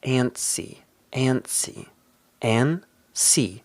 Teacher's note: Notice here that we don't really pronounce the T.